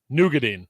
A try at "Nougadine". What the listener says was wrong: No, you're saying a G.